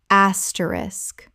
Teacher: Three syllables with the SK clearly at the end. The K at the end is not silent.